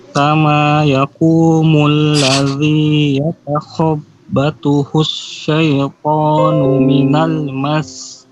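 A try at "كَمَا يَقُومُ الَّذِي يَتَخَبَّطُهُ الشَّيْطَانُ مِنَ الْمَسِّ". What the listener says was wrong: Lebih lama lagi tanya minal mas, 2 harokat.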